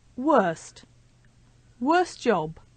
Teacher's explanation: when we have three consonant sounds in a row and the one in the middle is T that t sound will often disappear